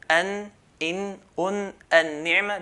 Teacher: The makhraj point for noon is the tip of the tongue. What lies opposite to it is the gums of the front two teeth, the front two incisors.